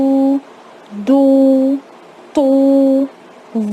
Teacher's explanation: دود میں جو زبان کے کنارے ہیں وہ اوپر کی دانتوں کی جڑوں میں ٹچ ہوتے ہیں، اور تو میں سامنے کے مسوڑوں پہ ٹچ ہوتے ہیں